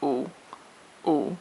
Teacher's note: the third tone is also short and it's in the Deep part of your voice